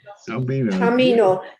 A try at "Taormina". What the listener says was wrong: Yeah, but it's got an A. Taormina. It's got an A at the end.